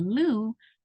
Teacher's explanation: when we say the word loo, we have to round our lips for that ooh sound